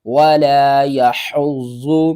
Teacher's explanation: یدع الیتیم فذلك الذی یدع الیتیم ولا يحض على طعام المسكين واو زبر وا، لام الف زبر لام، ولا یا زبر یا، ولا یا حا ضاد پیش حض، ضاد پیش زو، ولا یحض ضاد کے اوپر یہاں پر دیکھیں تو تشدید ہے، ضاد کو ہم نے سختی کے ساتھ پڑھنا ہے اور ضاد کو 2 بار پڑھنا ہے۔